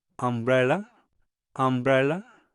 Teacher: la U va a sonar como una A invertida